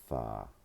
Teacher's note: they articulate and vocalize this as the voiceless dental fricative exclusively